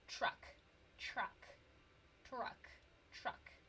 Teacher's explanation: the word truck is spelled T-R-U-C-K. But the TR sound is actually a ch sound.